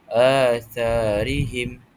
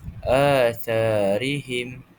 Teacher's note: Cara bacaannya dipanjangkan sebutan huruf mad dengan dua harakat. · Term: mad badal